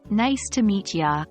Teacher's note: The you at the end is often not fully pronounced, especially in casual speech.